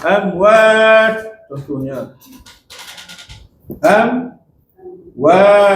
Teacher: Bibir tu kena rapat betul lah. Rapat dalam keadaan kena boleh keluar sikit suara. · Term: Izhar syafawi